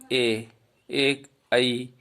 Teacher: ए आई का उच्चारण है वो कंठ से हो रहा है और जीभ है वो तालु को छू रही है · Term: कंठ तालव्य वर्ण